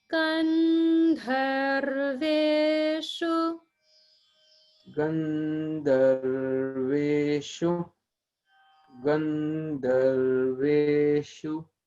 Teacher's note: the first syllable, gan, is the upper swara.